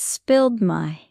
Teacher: In spilled my, the D sound links to my. So, it's spilled my.